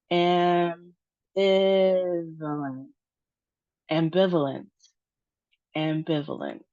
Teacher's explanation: we have four syllables, it looks like. And the emphasis on the second syllable. And it doesn't look like we have any long sounds.